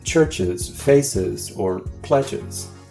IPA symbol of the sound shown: əz